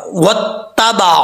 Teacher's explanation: वाओ को जब ता से मिलाएंगे तो बीच में अलिफ गिर जाएगा